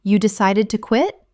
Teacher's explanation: You decided to quit? Utilizing a rising intonation.